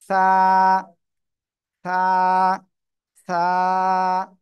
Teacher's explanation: জিহ্বার আগা উপরে দুই দাঁতের আগায় লাগাবো, লাগিয়ে নরম করে হালকা বাতাস বের করে